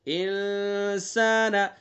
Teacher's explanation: نون ساکن کے بعد سین ہے تو یہاں اخفا کریں گے